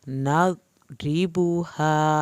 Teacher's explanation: را کے نیچے زیر ہے اس لیے را پتلا پڑھ رہے ہیں